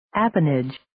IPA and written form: 'æpənɪdʒ (Appanage)